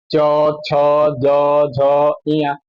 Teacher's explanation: च वर्ग का उच्चारण तालु से करते हैं